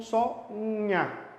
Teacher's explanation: Clé de bicicleta, que tem 2 consoantes e uma vogal, e você pronuncia as duas. No caso de rainha, o NH pronunciam só nha, como se tivesse só um fonema e uma vogal.